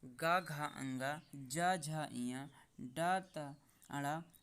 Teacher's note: ये सभी स्वर आपके सघोष वर्ण आते हैं। इनके उच्चारण में स्वरतंत्रियों में कंपन होता है।